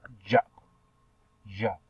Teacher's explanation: And your manner of articulation is uppercut, and your place of articulation is post-alveolar, and this is a voice consonant sounds